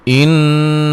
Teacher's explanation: نون مشدد پہ غنہ ضروری ہے